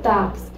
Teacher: então o X tem som de k s k seguido de S e por conta disso eu tenho cinco fonemas